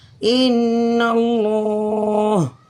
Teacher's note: نون مشدد کی وجہ سے اس میں ایک الف کے برابر نون میں غنہ ہوگا، اور نون کے اوپر زبر ہونے کی وجہ سے لفظ اللہ سے پہلے، تو اس لفظ اللہ کو ہم موٹا پڑھیں گے۔